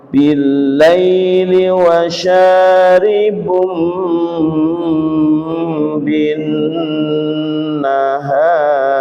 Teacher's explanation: Wa dhannu annahu waqi'um bihim wa syaribum bin nahar. Domah tanwin bertemu dengan ba dibaca suara tanwin diganti suara mim dengan dengung lama. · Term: iklab